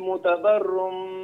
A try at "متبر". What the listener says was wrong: هنا الباء الباء عليها شدة. نعم. الباء عليها شدة وفتحة، متبر.